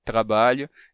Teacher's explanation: vez do R vibrado na ponta da língua ele ele não ele não pronunciou R na ponta da língua ele pronunciou o r na garganta